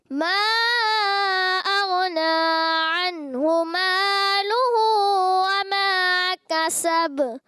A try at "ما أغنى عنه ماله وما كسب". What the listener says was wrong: غین میں کلکلا ہوا ہے، کلکلا نہیں کرنا آپ نے.